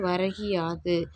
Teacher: முதல் சொல்லின் இறுதியில் கு எனும் எழுத்து கி என்று ஒலிக்கிறது. அதுவும் முழுமையாக ஒரு மாத்திரை அளவில் ஒலிக்காமல் அரை மாத்திரை அளவாக குறைந்து ஒலிக்கிறது. தன் ஒரு மாத்திரை அளவில் குறுகி ஒலிக்கும் இகரம் குற்றிய லிகரம்.